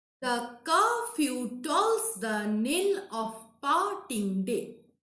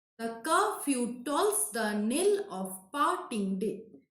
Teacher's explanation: The is unstressed, curfew, ka is stressed, few is unstressed. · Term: iambic meter